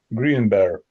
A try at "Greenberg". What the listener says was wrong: So the G seemed a bit dead both times. So when it's written this way, we say it quite strongly as Berg on the end. Berg. Greenberg. So it's a bit like iceberg. We have an iceberg. It's said the same sort. It's quite strong, the berg on the end. So this is a Greenberg.